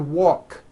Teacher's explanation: The word walk which has an unvoiced K sound at the end